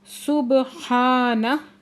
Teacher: با ساکن پہ کلکلا ہو رہا ہے